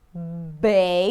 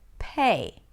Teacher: 'bay' - feel the vibrations, and now /p/ - no vibrations - 'pay'